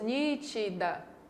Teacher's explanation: A palavra nítida tem 3 sílabas, nítida. E a sílaba mais forte é a antepenúltima.